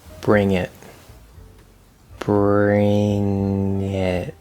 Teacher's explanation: this is a connection we get consonant to vowel